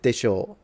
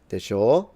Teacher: And then if you say it with a downward tone, then it's basically a more polite way to say des, because it kind of expresses, des is already polite. But with desho, with a lower tone, rather than desho, with a rising tone, it kind of expresses a little bit of uncertainty